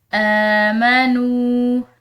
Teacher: نون کے بعد واو ساکن ہے تو اس کو ہم ایک الف کی مقدار لمبا پڑھیں گے